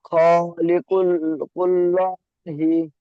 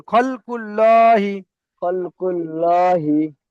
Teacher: আল্লাহ শব্দের ডান দিকে অক্ষরে পেশ এসেছে, তাই আল্লাহ শব্দকে পুর করে পড়তে হবে।